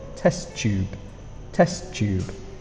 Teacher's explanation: we have T and T together we push the words together when we say them test tube test tube becomes a flowing sound volumetric flask volumetric